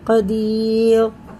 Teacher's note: या साकिन से पहले ज़ेर है तो इसे खींच के रा को साकिन करके पढ़ेंगे।